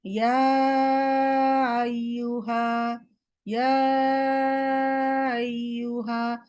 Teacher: হামজা বললোই না, তাসহিল করে ফেললো। তো হামজা মাখরাজ থেকে বলতে হবে আ।